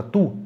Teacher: Quando a gente pronuncia a palavra tu, a gente arredonda os lábios já na hora que a gente está pronunciando a consoante T, antes de chegar no U. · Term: arredondamento dos lábios